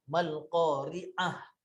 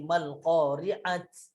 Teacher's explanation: Kalau kita matikan ataupun kita wakafkan, dia akan jadi ta tu akan jadi ha.